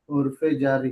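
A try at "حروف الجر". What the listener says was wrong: हुरूफे नहीं, हुरूफुल जर्री। हुरूफु अल जर्री।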